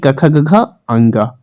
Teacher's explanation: सबसे पहले कंठ या कंठ, यानी कि कंठ से उच्चारण किसका होता है? तो कंठ और निचली जीभ के स्पर्श से जो बोले जाने वाले वर्ण हैं वे कंठ से उच्चारित होते हैं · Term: क वर्ग